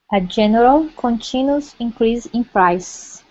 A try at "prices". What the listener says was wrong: Prices. Remember when it's like this, prices. So that E is not silent in this respect.